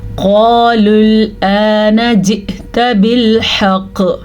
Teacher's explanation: قاف موٹا پڑھیں گے, الف مدہ کے ساتھ پڑھیں گے, لام کے ساتھ جڑ جائے گا کیونکہ واو پہ کوئی بھی حرکت نہیں ہے.